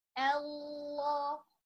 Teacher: if we started the sentence, the verse, the ayah with the exalted name of Allah, lam in the exalted name of Allah will be heavy